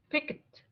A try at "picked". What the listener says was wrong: Instead of saying pick it, don't mind the E. Don't mind the E. Picked. It's like K and D. Picked.